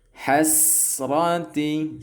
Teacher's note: Kemudian langsung mimnya ke huruf lam, yaumal hasrati, dan huruf sin atau sa ya, huruf sin itu sifatnya rokhawah, masih jalan ya